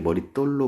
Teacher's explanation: 머리 플러스 돌 합성어 맞는데 머리돌이라고 발음하지 않죠? 분명히 머릿돌로 발음하죠? 된소리가 나고 있죠? 그래서 시옷을 붙여주는 거예요.